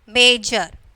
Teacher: So the first syllable is stressed.